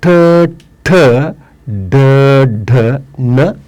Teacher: ವರ್ಗ ತೃತೀಯಾಕ್ಷರಗಳು ಅವು ಮೂರ್ಧದಲ್ಲಿ ಹುಟ್ಟುವ ಕಾರಣಕ್ಕಾಗಿ ಅವುಗಳನ್ನು ಮೂರ್ಧನೆ ಅಂತಲೂ ಕೂಡ ಕರೀತಾರೆ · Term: ಮೂರ್ಧಾಕ್ಷರಗಳು